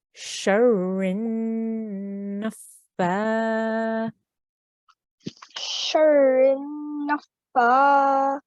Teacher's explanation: With the noon, we need to make a nasal sound because this is a noon gunna. So we have to hold on that for 2 seconds, right?